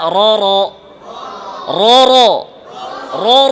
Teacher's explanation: ফাতহাতে মুখ খুলেন, ঠোঁট গোল করবেন না।